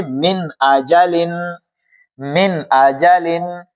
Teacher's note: नून साकिन के बाद हुरूफ हल्की में से हमजा आया है। तो यहां हम गुन्ना, इस नून साकिन के अंदर हम गुन्ना नहीं करेंगे